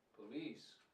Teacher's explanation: the correct intonation of this word is the second syllable, police